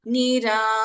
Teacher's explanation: Ba is an Alpa Prana. Dha is a Mahaprana.